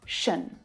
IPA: ʃən